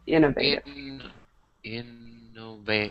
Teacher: So the stress is on that first syllable.